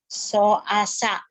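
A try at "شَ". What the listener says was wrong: So asya. Shinnya gitu. So asya. So asya.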